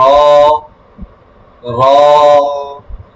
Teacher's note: র, জিহ্বার আগার উল্টা পিঠ, তারপর অপর উপরে তালুর সঙ্গে লাগিয়ে র। · জিহ্বার উল্টা পিঠ থেকে র